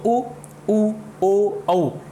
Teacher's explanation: तो ऊ, ऊ, ओ, औ, इन सभी को बोलने में हमारे ओष्ठ जो हैं उनका आकार वृत्त जैसा हो जाता है, तो ये वृत्तमुखी स्वरों की कैटेगरी में आते हैं।